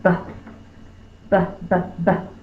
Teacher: my lips are closed and then i'll pop the air